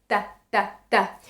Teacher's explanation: These sounds are called dental in Spanish and Catalan because the tip of our tongue is touching the teeth.